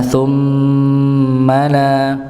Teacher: Ya, di sini kita dapati ada mim yang bertasydid, maka serupa dengan nun bertasydid, didengungkan, ditahan